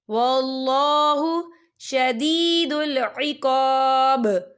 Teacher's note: واللہ، اللہ کا نام پر پڑھا جائے گا، اللہ کے نام سے پہلے زبر ہے